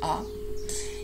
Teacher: this is the schwa the most common vowel phone in English which is also the most neutral one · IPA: ə